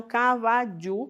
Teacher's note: O Guarani coloca a palatal djã. Então, cavadiu, que também é falado assim em alguns lugares, onde se fala espanhol.